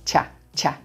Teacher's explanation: we begin with the ch sound, like cheese and chocolate, and the black cat vowel. It's a quick syllable, cha, cha. Then our T's become flap T, sounds like a quick D, and the vowel in that second syllable is a schwa, so it's super quick.